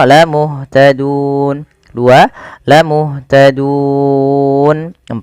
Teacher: Maka kita boleh memilih memanjangkan 2 harokat, 4 atau 6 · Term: mad arid lisukun